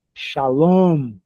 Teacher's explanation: sílaba final é a mais forte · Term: oxítona